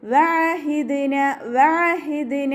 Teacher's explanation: ഹ sound വരുന്നത് അക്സൽ ഹൽക് ആണ് തൊണ്ടയുടെ അവസാന ഭാഗം